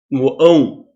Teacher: Então o ditongo não cresce, muito pelo contrário, ele diminui, ele decresce.